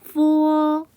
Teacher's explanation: 윗니를 아랫입술에 살짝 대었다 떼면서 발음해요